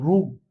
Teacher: एक स्वर आहे की जो जिभेला लागून होतो र म्हणताना मग र म्हणताना जीभ ही पिळली जाते थोडीशी